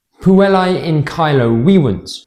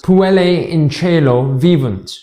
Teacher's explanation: In classical Latin, this sentence is pronounced Puellae in caelo vivunt. Note the hard C, the V pronounced as a W, and the AE pronounced as I. · You see the ch instead of the hard C, the V pronounced as a V, and the AE pronounced as A, like in way. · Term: ecclesiastical pronunciation